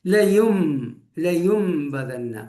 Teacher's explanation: ആ നൂനെ മീമാക്കി മറിച്ച് അതോടൊപ്പം 2 ഹർക്കത്ത് മണിച്ചു കൊണ്ടുവേണം പാരായണം ചെയ്യാൻ · സാക്കിനായ നൂനോ തൻവീനോ വന്നു, അതിനുശേഷം ബാ വരികയാണെങ്കിൽ ആ സാക്കിനായ നൂനിനെ അല്ലെങ്കിൽ തൻവീനിനെ മീമാക്കി മറിച്ചു കൊണ്ടുപോകുക. അവിടെ മീമിന്റെ ഉച്ചാരണമാണ് കേൾക്കുക, നൂനിൻ്റേത് കേൾക്കുകയില്ല, തൻവീനിൻ്റേത് കേൾക്കുകയില്ല. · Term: ഇഖ്ലാബ്